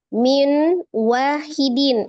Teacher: nun sukun ketemu dengan wawnya di situ yang diidghamkan disertai dengan dengungnya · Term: idgham bi gunnah